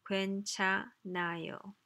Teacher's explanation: 흐 pretty much disappears. That's just one of those phonological phenomena